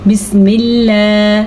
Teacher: اللہ کا نام باریک پڑھنا ہے کیونکہ اللہ کے نام سے پہلے زیر ہے